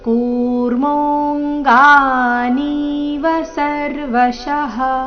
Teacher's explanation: ಕೂರ್ಮೋಂಗಾನೀವ ಇಲ್ಲಿ ನೀ ದೀರ್ಘ ವ ರಸ್ವ ಬರಬೇಕು.